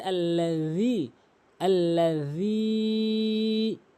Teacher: জিব্বার আগা এবং দাঁতের আগা থেকে জাল উচ্চারণ করতে হয়, এই জালের জায়গায় জিমের উচ্চারণ করে ফেলে, যার ফলে ভুল হয়।